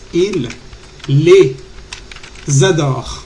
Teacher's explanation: Hacemos la liaison, la conexión entre la S de les y el verbo adore